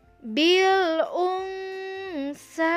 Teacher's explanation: Nun mati bertemu dengan sa, itu ikhfa, dibacanya samar.